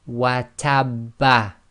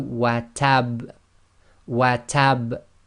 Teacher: slight echo must be audible, must be intense, but must not be converted into a fatha